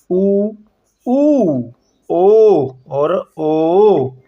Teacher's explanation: वे स्वर जिनके उच्चारण में होटों की आकृति वृत के समान गोल हो जाती है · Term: वृत्ताकार स्वर